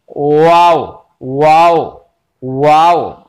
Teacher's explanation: लेकिन करना कैसे है, होंठ ही मखरज है वाव गैर मद्दा के भी, लेकिन करना क्या है आपको, अब होंठ मिलाना नहीं है बल्कि होंठों को गोल गोल करना है।